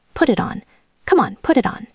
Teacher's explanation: The T in put becomes a flap T in American English sounding almost like a duh and it connects to it. And the T in it connects to on.